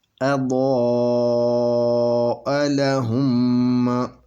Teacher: یہ میم ساکن کے بعد میم ہے، تو یہاں پہ ادغام شفوی ہوگا